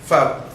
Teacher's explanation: upper teeth touches the lower lip, and air is released with the friction. So that's why we say it is a labiodental.